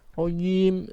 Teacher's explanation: Tenggorokan bagian tengah lidah bagian tengah dengan angin naik yang lurus di atasnya. Itu makhrajnya jim.